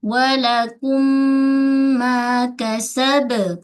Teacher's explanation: Okey, mislani dua huruf yang sama, makhraj sama, sifat. Walakum, suara dengung naik ke hidung, gunnah yang akmal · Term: gunnah akmal